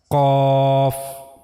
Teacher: So while reading Qaf, you have to use this part of your palate. Roof of the mouth in the area of soft palate. This is the origin of letter Qaf.